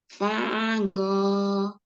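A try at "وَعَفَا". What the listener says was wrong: wa'afa, wa'afa, wa'afa. Bukan go ya. Kalau go komanya agak gede itunya bulatan itu bulat. Fa. Wa'afa.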